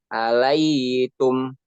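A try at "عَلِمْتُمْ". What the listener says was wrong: Mana ada huruf ya di situ?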